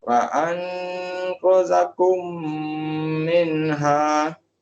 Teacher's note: Masukkan mim itu ke dalam mim kedua. Kemudian kita baca dia dengan dengung. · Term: idgham mislain